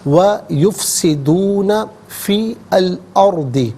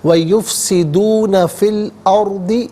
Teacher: ناظرین فا کے نیچے زیر ہے سے الارض کی لام ساکن کے ساتھ ملائیں گے، درمیان میں سے الف یعنی حمزہ کو حذف کیا جائے گا